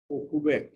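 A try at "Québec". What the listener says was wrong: ও কেবেক, কুবেক না। কিউ লেটারটার উপরে ইউ থাকলে ওটা most of the cases silent রাখতে হয়, ওটা উচ্চারণ হয় না, ঠিক আছে?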